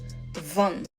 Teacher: The Dutch V is the same position as the Dutch F. It's just with voice and vibration.